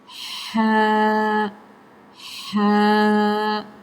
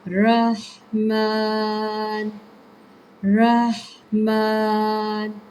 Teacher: ہا ہا ٹھنڈا اور باریکی سے ادا کیا جاتا ہے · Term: ہا باریک